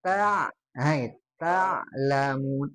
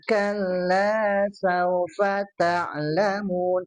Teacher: yang ain-nya masukkan ke tengah tenggorokan